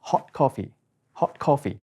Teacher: 個▁T▁音就會因為後面個▁K▁音而變成口型就好似個▁K▁咁樣嘅